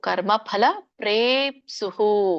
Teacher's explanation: ಕರ್ಮ ಫಲ ಪ್ರೇಪ್ಸುಹು, ಫಲ ಫಲ ಅಲ್ಲ, ಫ ಎರಡು ತುಟಿ ಹತ್ಬೇಕು